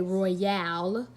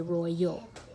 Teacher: So this is going, al says owl, but in this case, the a is going to make the schwa sound